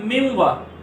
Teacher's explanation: اب نون ساکن کو واو میں ملا دیں گے، من وا سے بن جائے گا مم وا۔ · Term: ادغام